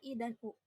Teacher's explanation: Vokal tinggi yang dibentuk dengan menempatkan posisi lidah di atas, yaitu ada vokal I dan U.